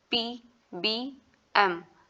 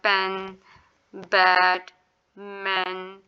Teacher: हमारे वैसे दोनों लिप्स जो होते हैं वो बिल्कुल बंद होते हैं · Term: बाइलेबल